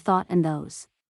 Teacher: a sound produced by inserting the tip of the tongue between the upper and lower teeth example the initial sounds of thought and those interlanguage grammar intermediate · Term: interdental